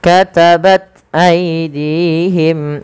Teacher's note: cara membaca ta sukun sama dengan membaca huruf Kaf sukun karena dia punya huruf yang punya sifat namanya Hamas dan syiddah maka langkah pertama ditahan nafasnya baru dialirkan suaranya katabat katabat katabat